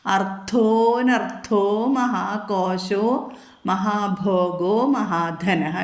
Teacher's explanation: അർത്ഥോന്ന് ദീർഘം രണ്ടു മാത്രം എടുക്കരുത് ഒരു മാത്രം തന്നെ എടുക്കാൻ പാടുള്ളൂ